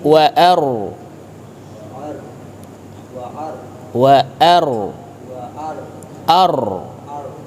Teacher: rnya itu ada gaung tebal di rongga mulut